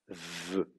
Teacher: Si vous regardez comment vous faites le V en français, la lèvre du bas vient contre les dents et pas contre la lèvre du dessus. C'est pas ve, c'est v. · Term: labiodontale